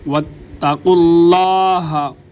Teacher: ہا کو سینے کا زور لگا کر گلے کے سب سے نچلے والے حصے سے